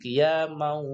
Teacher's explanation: Ada tanwin bertemu dengan wawu, maka suara tanwin ini akan hilang, kabur ya. Suara mimnya dimasukkan ke dalam huruf wawu. Qiyamau, seperti itu. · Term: idgham bi gunnah